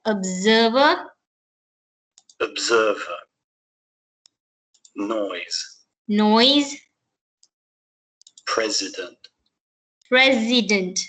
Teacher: yeah but when we actually pronounce this words the pronounciation changes so the S sound is sounded more of like a z sound